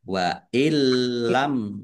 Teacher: Masuk dengan tidak mendengung. langsung masuk ke huruf lam tetapi tidak mendengung